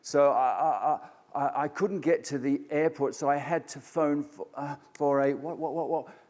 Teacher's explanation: simply using a rising intonation while they're trying to say something